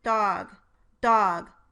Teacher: Listen as I release a voiced stop in the word dog.